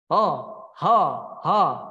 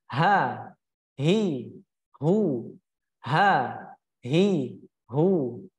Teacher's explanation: ketika kita menyebutkan huruf ha itu pangkal lidah tidak boleh terangkat tidak boleh karena ketika terangkat tentu akan berbeda daripada Bunyi yang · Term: istiffal